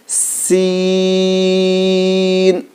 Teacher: سیٹی کی آواز ہونی چاہیے اس میں، اس کو زیادہ کھینچ کے پڑھنا ہے